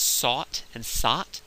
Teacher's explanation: sought and sot might be pronounced the same